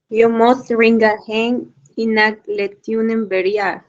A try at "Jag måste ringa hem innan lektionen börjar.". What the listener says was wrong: Bien.